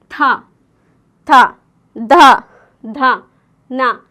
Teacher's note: ನಾಲಿಗೆಯಿಂದ ನಾವು ದಂತ ಅಂದ್ರೆ ಹಲ್ಲುಗಳನ್ನ ನಾವು ಟಚ್ ಮಾಡ್ತಿದ್ದೀವಿ